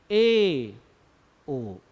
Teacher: जब ए और ओ बोल रहे तो मुख शुरु से आधा बंद है